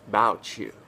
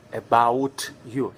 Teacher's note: one word ends in t, about, and the next word starts with you. T becomes ch